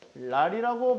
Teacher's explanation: 같은 울림소리 중 하나인 니은이 리을로 바뀌어주는 현상, 그것을 유음화라고 합니다